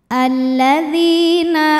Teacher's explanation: karena ada Ya Sukun sebelumnya berbaris kasrah maka huruf Dal panjang dua harakat